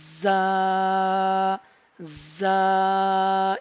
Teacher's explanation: इसमें आप देखेंगे ये जो आगे वाले दांत हैं ये आपस में टच होंगे तो ये आपका बजिंग साउंड निकलेगा, और पीछे वाले टीथ जो हैं ये इनमें गैप रहेगा। · तो इसका मतलब ये हुआ कि सेम टाइम में, एक ही वक्त में आपकी जुबान नीचे वाले दांतों के किनारों के साथ भी टच हो रही होगी और ऊपर वाले दांतों के साथ भी। तो इसको हम पढ़ेंगे बजिंग साउंड के साथ, जा, जा।